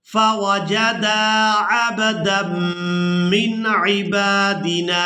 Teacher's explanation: मीम मुशद्दद पर गुन्ना करेंगे, आवाज़ को नाक के बांसे से अदा करेंगे।